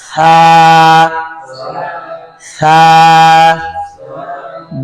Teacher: সা দুই দাঁতের আগার জিহ্বার আগায় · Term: নরম আওয়াজে